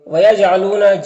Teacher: جیم کو ادا کرتے وقت جیم کی آواز اپنے مخرج سے ٹکر کھا کر الگ ہو جائے گی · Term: قلقلہ